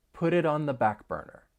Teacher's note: you're going to hear me pronounce the final T in put and the final T in it as a flap T, because those T's come between two vowel sounds. And then we can link the entire phrase.